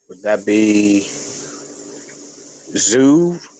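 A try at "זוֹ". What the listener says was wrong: Remember, this is the Cholam, so that's gonna say. That's gonna say, oh, not ooh.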